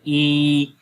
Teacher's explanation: یا کو جب ہم پڑھتے ہیں یا تو زیادہ گیپ آ رہا ہے تو یہ یا کا مخرج ہے. اور جو یا مدہ ہے اس کا مخرج جوف دہن ہوتا ہے یعنی منہ کے اندر کا خالی حصہ